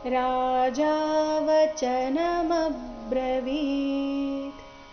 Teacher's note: ಅಲ್ಲಿ ಮೇಲೆ ಆಘಾತ ಬರಬೇಕು ಮುಂದೆ ಬ್ರ ಎಂಬ ಸಂಯುಕ್ತಾಕ್ಷರ ಬಂದ ಕಾರಣ ಬ್ರವೀತ್ ಈ ರೀತಿ ವಿ ದೀರ್ಘ ಬರಬೇಕು ಕೊನೆಗೆ ಅರ್ಧ ತಕಾರ ಇದೆ